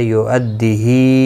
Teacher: یؤدیہی یہاں پر بھی مد منفصل ہے، 3 الف کی مقدار کے برابر کھینچ کر پڑھیں گے۔